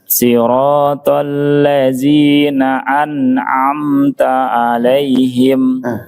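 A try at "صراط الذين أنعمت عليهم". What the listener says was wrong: Saya nangkapnya yang pertama masih mirip-mirip ain. Siratal ladzina coba fokus dulu. Coba dulu relax saja dia di pita suara agak kurang pas sedikit, agak mirip kecampur sama nah itu enak relax ya latihannya pelan-pelan ya. Baru yang ain ditekan dikit.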